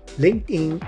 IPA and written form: lɪŋktˈɪn (LinkedIn)